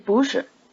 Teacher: notice the rising tone on boo